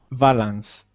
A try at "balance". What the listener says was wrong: Close. It sounds like you've got the Spanish B. So it's like it sounds like a V sound. So try to, if you put your lips together and make an exploding sound. So balance. Balance.